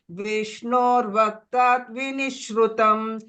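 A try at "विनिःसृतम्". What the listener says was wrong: But still I heard Shru. Shruti, that's Shru I heard. Is Shru.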